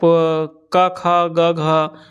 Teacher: कंठ से प्रयोग होता है